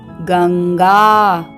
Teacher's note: व्यंजन है और क वर्ग का पंचमाक्षर है हलंत ंग तो यहां पर अनुस्वार का उच्चारण होगा हलंत ंग की तरह तो ये बनेगा गंगा आइए इसका वर्ण विच्छेद देखते हैं हलंत